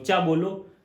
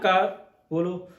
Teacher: चा कहाँ से आ रही है, तालू आ रही है, जीभ ऊपर टच हो रही है, मुख है जो हमारा, मुख के ऊपर जीभ टच हो रही है।